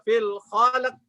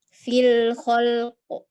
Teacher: Ya, lamnya tawasud, khol, kemudian qalqalahnya qaf jelas.